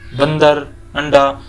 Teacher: सिर्फ नाक से ध्वनि निकलता है, उसे हम अनुस्वार बोलते हैं